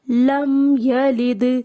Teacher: لم پہ پھر ساکن آ رہا ہے اور اس کے میم کو ہم نے زیادہ باؤنس نہیں کرنا اس لیٹر کو۔